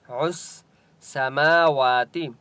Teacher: عس، سین کے اوپر تشدید ہے، عین کو سین کے ساتھ ملائیں گے. · میم اور واو دونوں کے اوپر کھڑا زبر ہے، ایک ایک الف کی مقدار کھینچ کر پڑھیں گے